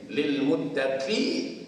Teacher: bila kita sambung dia a tu tak ada dah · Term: Hamzah wasal